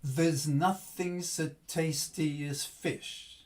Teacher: i'm not giving the full pronunciation to those weak syllables